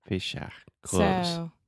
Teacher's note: if you want to say clothes just forget the th and just say Fisher clothes I'm gonna grab my clothes in